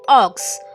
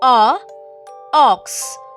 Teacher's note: Repeat O, ox. Short vowel sound, round lips.